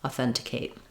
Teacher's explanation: T and Kate are both short um even though Kate doesn't have a reduced vowel